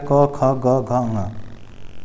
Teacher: क वर्ग के व्यंजन जो होते हैं कंठ से निकलते हैं